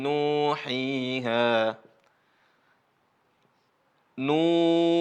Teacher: Karena ada wawu mati sebelumnya dhammah. Makanya nunnya dibaca panjang. Suaranya memanjang nunnya. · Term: mad